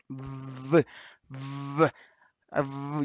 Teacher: the vocal folds are adducted and vibrating. Okay, so they are kind of blocked and vibrating. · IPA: /v/